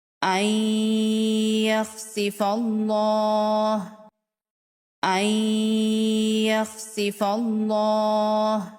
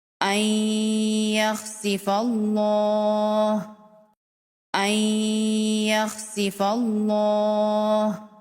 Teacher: یہاں پر دیکھیں نون ساکن الگ کلمے میں ہے اور حروف یرملون میں سے یا الگ کلمے میں ہے، تو یہاں پر اظہار مطلق نہیں، یہاں پر ادغام ہوگا غنہ کے ساتھ۔